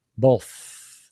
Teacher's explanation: air without not no that's that's voice that's wrong for both it's just the air pushing out without a vibration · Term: voiceless TH sound